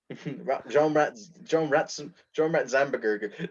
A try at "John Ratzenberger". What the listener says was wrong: You're saying it wrong. It's just say Ratzenberger. You're going Rats and Burger. You're really in that, like, pronouncing the "an" for some reason. No, you're not pronouncing it wrong. You're just putting weird enunciation in certain parts.